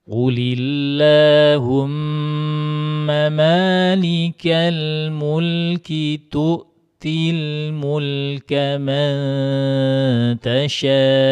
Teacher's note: Qulillah ini lafaz Allahnya ini dibaca tipis karena sebelumnya berharakat kasrah. Jadi qulilla bukan qulillah bukan ya.